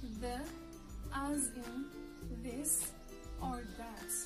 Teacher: This letter pronunciation is a voice sound, the, as in this or that. It's pronounced with the tongue between the upper and the lower teeth.